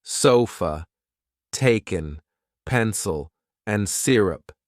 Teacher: The schwa is a neutral vowel sound found in many unstressed syllables, like the A in sofa or the E in taken.